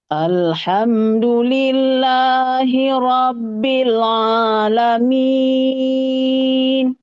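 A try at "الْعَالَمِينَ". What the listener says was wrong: Nah, kuncinya pada ainnya. Alamin, alamin. Alhamdulillahi Rabbil Alamin.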